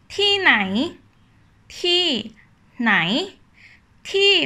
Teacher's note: we say with falling tone and then nai with rising tone